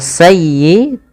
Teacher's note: Kemudian sayyi'atan wa ahatat bih, pada lafal sayyi tekan di huruf ya-nya karena dia ya tasdid dan lembutkan